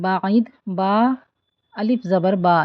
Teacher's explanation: یہاں 2 count stretch کریں گے، الف مدہ ہے با کے بعد ، اور عین کو وسط حلق سے ادا کریں گے، بعید،